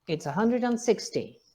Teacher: the nucleus is on hundred